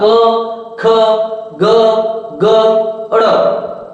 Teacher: क, ख, ग, ग, ड़ ये कौन से है? कंठ से बोले जाते हैं।